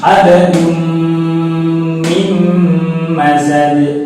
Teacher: Ini kebetulan juga ada nun sukun bertemu mim, ada 2 ya. Yang satu tanwin bertemu mim, yang kedua nun sukun bertemu mim, sama-sama dibaca dengung karena mim adalah huruf idgham bihunna yang jumlahnya 4 tadi.